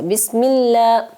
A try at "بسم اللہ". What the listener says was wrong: میں اللہ نہیں پڑھیں گے بیٹا، بسم اللہ، ملا، جی کلیئر آواز آئے گی لام کی، اس کو اپنے گلے میں نہیں، ناک میں نہیں لے کے جانا۔ بسم اللہ، لام بولے،